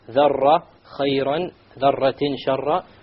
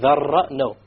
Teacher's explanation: You make sure there is no rolling of the R.